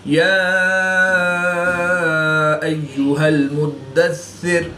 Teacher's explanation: دال حروف قلقلہ میں سے ہے اور یہ مشدد ہے تو یہاں پر قلقلہ کبریٰ کر کے پڑھیں گے